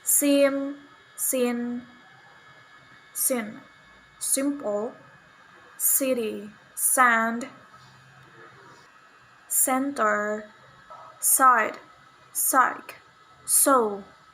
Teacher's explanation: voiceless alveolar fricative sound sa